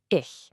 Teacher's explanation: You hear that soft sh sound at the end?